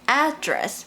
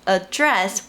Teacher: pronounced as “AD-dress” when it’s a noun but pronounced as “ad-DRESS” when it’s a verb